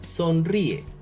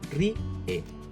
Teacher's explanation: El hiato está entre las sílabas ri, e, con la I acentuada.